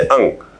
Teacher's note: जो अनुस्वार होता है इसका उच्चारण नाक से होता है, उच्चारण करने के दौरान हवा नाक से बाहर निकलती है